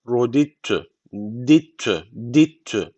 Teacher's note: Şu cezimli d hiç okunmuyor. Şu T de şeddeli okunuyor. Bu kadar. Şu diyi şeddeli bir şekilde şuna bağlıyoruz. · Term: İdgam mütecaniseen